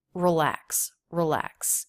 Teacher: Schwa in that first syllable.